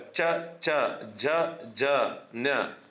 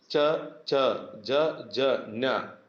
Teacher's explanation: ತಾಲವ್ಯ ಅಂತ ಹೇಳಿದ್ರೆ ನಮ್ಮ ಬಾಯಿಯ ಮೇಲ್ಭಾಗದಿಂದ ಹುಟ್ಟೋದ್ರಿಂದ ಅದನ್ನ ತಾಲವ್ಯ ಅಕ್ಷರಗಳು ಅಂತ ನಾವು ಕರಿತೀವಿ.